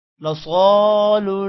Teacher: صاد موٹا ہوگا اور صاد کے بعد الف ہے